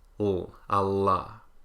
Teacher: the lateral approximant L, which if you're American is usually velarized